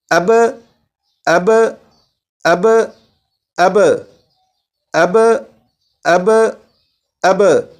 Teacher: یہ صرف سبق کو سمجھنے کی حد تک ہے، لیکن جب کلکلا کریں گے وہ اس طرح سے ہوگا، جیسے یہاں پر با ہے، با پر کلکلا خوب ظاہر کر کے پڑھیں گے تو اس طرح پڑھیں گے اب اب اب اب اب اب اب۔ یہ با کو پڑھ کر آواز لوٹ رہی ہے اور یہ کلکلا خوب ظاہر ہو رہا ہے